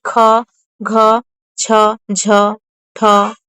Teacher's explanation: महाप्राण वे ध्वनियां हैं जिनके उच्चारण में अधिक हवा निकलती है।